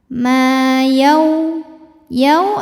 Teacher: karena wau sukun didahului fathah maka yaunya dilembutin